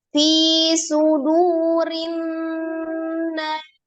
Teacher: Ya, ada tanda wakofnya, berarti sinnya disukunkan karena diwakofkan